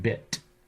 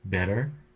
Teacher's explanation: the tongue does make contact in bit but not quite in bitter